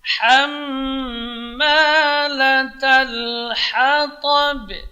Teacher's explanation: ta-nya yang tebal, tapi ba-nya tipis.